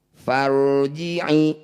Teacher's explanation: Bunyikan ro ini dengan tebal. Caranya kurangi getarannya. Jangan banyak bergetar di sini. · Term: ro tebal